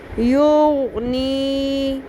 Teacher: یہ نون زیریا نہیں ہے، مد اصلی ہے، اس کو تھوڑا لمبا کریں